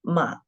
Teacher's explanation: ma from the 2nd down to the 1st and then raise up to the 4th. Ma, down at first and goes up. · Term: 3rd tone